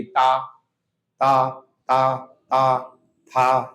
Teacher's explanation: देखना उच्चारण में जीभ दांत से जरूर टकराएगी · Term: दंती व्यंजन